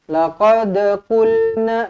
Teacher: laqad lantunkan qalqalah sughra.